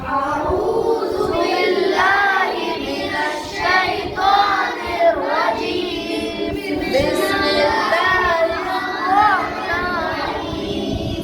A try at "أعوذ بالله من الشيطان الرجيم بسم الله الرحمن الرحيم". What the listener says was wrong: सांस नहीं तोड़, सांस टूट रहा हो तो वहीं पर रुक जाओ, निर्वाजीम तक पढ़ दो, बस सांस निर्वाजीम ही पढ़ो, नहीं तो सही है, सांस नहीं तोड़ना।